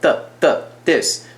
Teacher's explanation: 这个 th 开头的 th 我们都不是念擦音，我们是念塞音，所以它是爆出来的